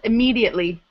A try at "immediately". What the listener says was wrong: You're emphasizing this syllable. Immediately.